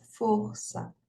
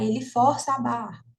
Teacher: esse o ele é um o fechado né a pronúncia fechada